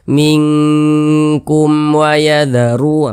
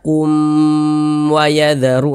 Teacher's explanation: Ini mim sukun berjumpa dengan huruf waw, bukan huruf ba, bukan huruf mim, maka hukumnya izhar syafawi. Baca jelas, tidak berdengung, baca pendek saja.